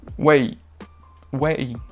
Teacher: c'est normal qu'on entende plus le E que le I, qui va être, lui, très bref, très court, très explosif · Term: diphtongue